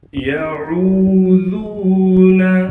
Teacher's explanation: ذال کو ایک الف کی مقدار کھینچیں گے اور ذال کو نرم کر کے پڑھیں گے